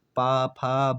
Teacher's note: में टकरा रहे दोनों ऊंट आपस में स्पर्श कर रहे हैं दोनों होंठ आपस में हाथ मिला रहे हैं